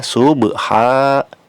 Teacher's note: Subha dibacanya subha, ba-nya ba sukun, sub dipantulkan. Ini termasuk qalqalah juga ya, sama seperti ayat pertama dan ayat kedua, qalqalah sugro.